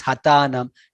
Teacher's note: Again, ta Mahaprana is not there. It is hatanam. It is not hathanam.